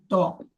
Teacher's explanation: তর মাখরাজটা জিভের আগা সামনে উপরে দুই দাঁতের গোড়ার সাথে লেগে ত উচ্চারণ হয়